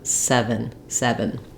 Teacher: of the word so I don't want to be saying seven I don't want the F sound in the final syllable